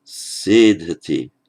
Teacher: sedhati, with the stress on that first syllable. That's a characteristic of the first class of verbs, that the stress falls on that root syllable.